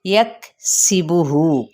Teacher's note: کاف پہ ہمس ہے، سین کی زیر یعنی سیٹی کی طرح آواز نکالنی ہے، اور ہو پہ واو مدہ کا مقام یعنی الٹا پیش ہے، ٹھیک ہے۔